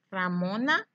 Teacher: cuando yo digo ramona no se escucha tan fuerte la r